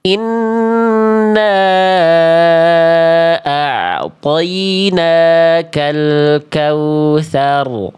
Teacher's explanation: bacaan yang kurang termaksimalkan pada huruf wau sukunnya karena kurang muncung ya, karena tidak monyong ya. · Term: kurang monyong